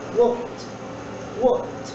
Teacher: the last sound of the verb is k. It is a voiceless sound. So, the past tense of the verb is pronounced walked, walked.